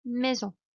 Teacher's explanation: Porque tengo una vocal más la N. Entonces suena nasal esa vocal.